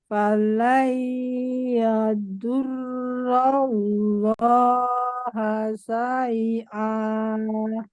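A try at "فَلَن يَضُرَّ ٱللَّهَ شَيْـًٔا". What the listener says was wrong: ya, huruf sya belum terdengar jelas. Sya. Falan yadurrallaha syai'a. Tadi lafaz Allah gimana? Iya, harusnya tipis karena sebelumnya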